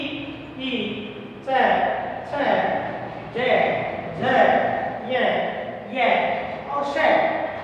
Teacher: जितने भी इसमें स्कार है इसमें इसको तालु के द्वारा बोला जाता है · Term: तालव्य